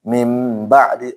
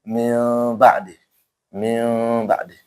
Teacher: membalik suara nun menjadi suara mim. Makanya mim ba'di walaupun nanti ada yang baca min ba'di. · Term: iqrab